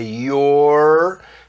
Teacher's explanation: Tem que dobrar a língua para trás para fazer esse som do R.